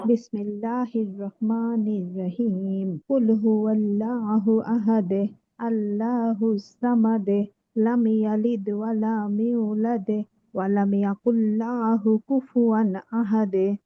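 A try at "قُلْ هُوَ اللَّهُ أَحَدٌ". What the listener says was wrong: আপু উচ্চারণগুলো একটু বেশি নর্মাল হয়ে গেছে, বিশেষ করে হায়ের জায়গায় হা হয়েছে। কুল হুয়াল্লাহ।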